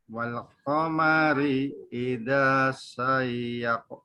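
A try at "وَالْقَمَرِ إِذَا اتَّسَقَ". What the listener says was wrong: Idat tasaqo. Idat tasaqo. Langsung menekan ke tasdid. Buang alifnya, langsung menekan ke tasdid. Idat tasaqo.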